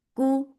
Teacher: The sound is short and light. Ku for the circular lips. The sound is short.